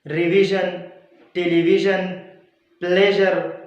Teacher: जब हम ये साउंड प्रोड्यूस करते हैं तो जुबान ऊपर तालु से थोड़ा नीचे रहती है